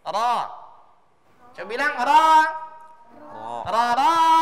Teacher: Ujung lidahnya harus menyentuh langit, bukan langit-langit di depannya, di gusi bahagian atas mendekati gigi. Jangan sentuh gigi. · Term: huruf ro